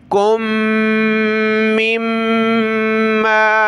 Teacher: میم کو پھر اگلی میم کے ساتھ ناک میں آواز پیدا کریں گے